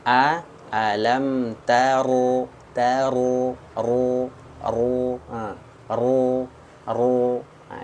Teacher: makhraj huruf ro ini ujung lidah ya makhrajnya Dari ujung lidah naik ke langit-langit bukan bibir